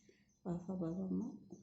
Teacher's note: होंठ का होंठ से स्पर्श